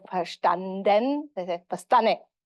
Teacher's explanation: this assimilation of D after nasal consonant